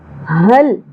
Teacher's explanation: حل، ہا لام زبر حل، ہا کو اقصی حلق سے اچھے سے ادا کرنا ہے، سانس کی آواز نہیں آنی چاہیے، ٹھیک ہے۔ حل، حمزہ کے اوپر زبر ہے، آدھی الف یا ایک ہی حرکت ہے، زیادہ نہیں کھینچنا۔